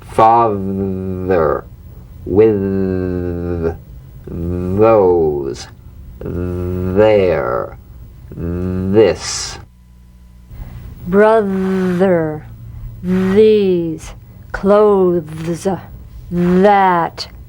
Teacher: slip the rim of the tongue between the teeth and sing feeling a buzz or vibration feel that vibration on the tongue outside the teeth you've got · The vibrant sound of the voiced th has a quality much like that of the v. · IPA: /ð/